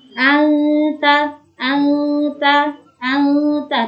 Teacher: Ikhfa hakiki artinya yaitu samar. Samar itu seperti menambahi huruf eng.